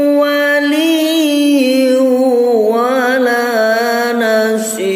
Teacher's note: nun mati bertemu wawu, nunnya tidak kelihatan, nunnya suaranya otomatis akan hilang, tapi kalau ditulis tetap wujud. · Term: idgham bi gunnah